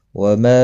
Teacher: وما مد منفصل ہے، 3 الف کے برابر کھینچ کر پڑھیں گے۔ حروف مدہ کے بعد جب بھی حمزہ بشکل الف دوسرے کلمے کا پہلا حرف ہوتا ہے تو مد منفصل لگتی ہے، یعنی درمیانی مد، چھوٹی مد 3 الف کے برابر کھینچ کر پڑھا جاتا ہے۔